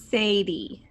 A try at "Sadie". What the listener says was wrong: You sound like you have a bit of a lisp there, lady. Yes, it's when you say your S is really long.